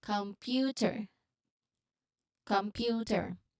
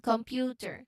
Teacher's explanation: feeling that smooth transition from the nasal M to the lip driven P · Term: MP cluster